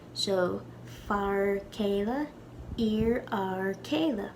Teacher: When we lenite an F, it becomes completely silent.